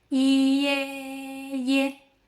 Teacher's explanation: Start with e, lip spread, then glide into a.